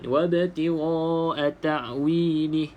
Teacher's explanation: hamzah mati ni pastikan bunyi makhrajnya di bawah, yang paling dalam halqum tu paling dalam. Kalau keluar sedikit dia dah jadi bunyi macam ain.